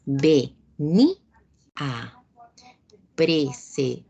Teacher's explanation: se separa en dos sílabas la que podríamos haber observado como una sola, como una sola palabra, como una sola sílaba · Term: hiato acentual